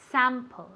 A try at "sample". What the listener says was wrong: Sample. Sample. It's more like it's more nasal.